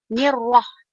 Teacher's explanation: kita tidak boleh terlampau getarkan huruf ra itu, cukup hanya sekali getaran sahaja. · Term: al-takrir